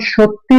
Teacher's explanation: এ সত্য শব্দটাকে যখন সত্যি বলা হচ্ছে তখন এটার শেষে একটা ই একটা ধ্বনি আসতেছে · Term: অন্তঃসরাগণ